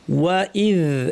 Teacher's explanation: ওয়া ইদ, ওয়া স্পষ্ট, হামজা শক্ত, দাল জিহ্বার শীর্ষ দাঁতের শীর্ষে লাগিয়ে আওয়াজটা স্পষ্ট করতে হবে, কোনো বাতাস থাকবে না। ওয়া ইদ আওয়াজটা জারি থাকবে।